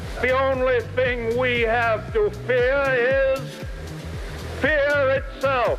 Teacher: dropping the r at the end of fear